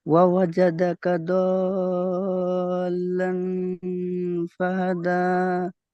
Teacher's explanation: নাকের পাশায় তুলে 1 আলিফ পরিমাণ গুন্না করে পড়তে হবে। · হুরুফে মাদ্দার পরে তাসদিদ এসছে, একে মাদ্দে লাজিম বলে 3 থেকে 5 আলিফ পরিমাণ টান হবে।